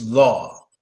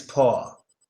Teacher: is typically not every time but like 90% of the time when a w is after the a the a is pronounced deeper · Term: deep a sound